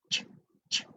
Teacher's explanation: Try to pronounce ch. There's no vibration here. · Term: voiceless